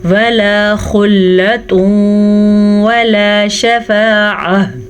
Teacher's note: تنوین کے بعد یمون میں سے پھر واو ہے تو یہاں بھی ادغام بالغنہ ہو رہا ہے